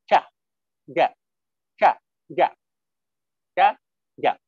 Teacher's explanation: We produce chaja, I think, using alveolar region. But in English, this cha and ja sound makes use of hard palate, the middle of upper region of the mouth. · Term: cha ja sound